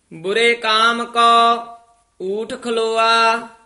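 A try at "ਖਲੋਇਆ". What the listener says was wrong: खलोआ नहीं है खलोया,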